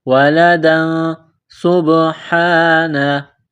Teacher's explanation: اتَّخَذَ اللَّهُ وَلَدًا سُبْحَانَهُ، دال کے اوپر 2 زبر تنوین ہے، تنوین کے بعد سین ہے تو یہاں پر اخفا کریں گے، آواز ناک میں چھپائیں گے